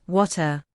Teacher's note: In American English, the T often sounds like a soft D, so it's water. But in British English, the T is crisp